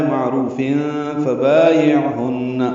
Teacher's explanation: تنوین کے بعد فا آنے کی وجہ سے اخفا ہے ، معروف فبایعہن، با الف مدہ عین ساکن پہ اظہار ہے،